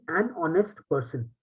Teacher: the word honest, right, begins with the O sound. The H is not pronounced.